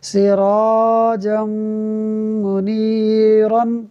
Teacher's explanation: ناظرین، یہاں دیکھیے جیم پر 2 زبر کی تنوین ہے اور 2 زبر کی تنوین کے بعد میم حروف یرملون میں سے ہے، لہٰذا ادغام ہوگا، یعنی ہم غنہ کر کے پڑھیں گے